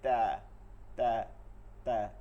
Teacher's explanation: কিন্তু মাখরাজ তো একদম সহজভাবে পড়ানো হয়, জিহ্বার আগা সামনের উপরের দুই দাঁতের আগা গোড়ার সঙ্গে লাগায়, ত দালতা, ওই গোড়ার পেট থেকে গোড়া এই পুরোটা সময় লাগে দেখে এটা মোটা হয়ে যায় ত, আর ঠিক একদম গোড়ায় লাগে, পেটের দিকে আসে না, এর জন্য হয় তা তা তা, এর জন্য চিকন হয়ে যায় তা, ত ত ত, ঠিক আছে।